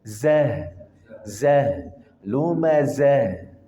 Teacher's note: Zah, betul-betul dia dari pangkal tenggorokan.